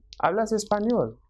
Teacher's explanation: in order to differentiate it from an affirmative sentence, the intonation increases at the end.